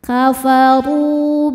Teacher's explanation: cara bacanya huruf ro panjang dua harakat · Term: Mad Thobi'i